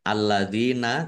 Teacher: Kaqad alladzina lamnya dibaca dobel ya ada tasdidnya dalal kasroh ya sukun mad thobi'i panjang dua harakat